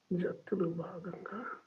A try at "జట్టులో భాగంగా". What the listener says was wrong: దెన్ జట్టులో భాగంగా అయిపోయిందండి. దిస్ వన్ భాగంగా, because H sound is there. in Telugu we use the second letter bha, not normal ba. It is bha జట్టులో భాగంగా.